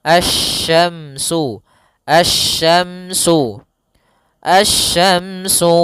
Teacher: langsung ke huruf shin, makhrajnya dari tengah lidah kita